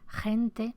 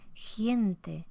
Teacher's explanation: Antevocal palatal, la articulación de la velar, en lugar de ser gente, parece giente, como si se creara una vocal y se articulara en la zona palatal. Es muy típico de hablas chilenas.